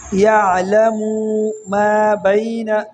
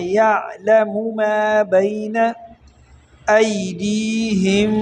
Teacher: یعلم ما بین ایدیہم، یعلم، یعلم، یہاں پر یہ یعلم جو ہے یہاں بھی مسٹیک بہت بڑی ہے، وہ یہ ہے کہ یہاں پر اکثر لوگ پڑھتے ہیں یعلم ما بین، میم کو کھینچتے ہیں۔ یہاں پر آپ نے میم کھینچنا نہیں ہے بلکہ آپ نے میم کو پیش کر کے پڑھنا ہے